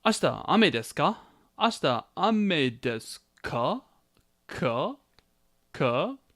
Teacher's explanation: So with the rising intonation and the ka particle, it becomes a question.